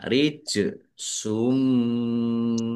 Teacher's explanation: jim sukun bacaan kolkolah dibaca memantul ya, ditampakkan pantulannya